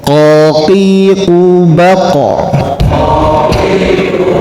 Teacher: lidah kita yang belakang bertemu dengan ee dengan gusi yang lunak sekali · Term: qof